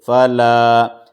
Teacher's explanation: الف مدہ ہے، الف سے پہلے زبر ہے، مد اصلی ہے، اس کو 2 حرکت کے برابر کھینچیں گے